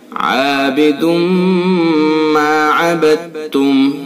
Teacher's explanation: ولا انا عابد ما عبدتم، عابد یہ دال کے اوپر تنوین ہے 2 پیش کی، اس تنوین کے بعد یہ میم ہے، اس میں ادغام ناقص یعنی ادغام بالغنہ ہوگا، غننے کے ساتھ اس کو ہم پڑھیں گے۔